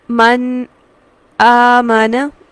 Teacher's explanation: نون پر اگر ہم لمحہ بھر کے لیے رکتے ہیں، سانس نہیں توڑتے اور آواز کو توڑتے ہیں تو اسے سکتہ لفظی کہا جاتا ہے، جس طرح سے من آمنا۔